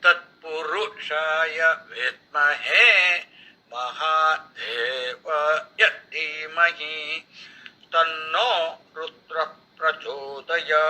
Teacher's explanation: In this one, when you look at from the point of view of the time duration, Tat Pu, then Ma and Rudra, all these have only 1 unit of time duration. There is no elongation.